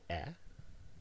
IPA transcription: æ